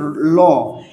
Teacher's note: এখন আমাদের এখানে দেখেন এই যে আমাদের ল, এই ল ব্যঞ্জনের উচ্চারণ, ল যখন উচ্চারণ করি এটা দাঁতের গোড়ার দিকে আঘাত করে